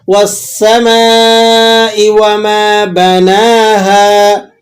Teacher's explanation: والسماء وما بناها، بناها نون پہ کھڑا زبر ہے، ہا الف زبر ہا ہے، مدہ ہے، تو آپ نے اسے 1 الف تک کھینچ لینا ہے.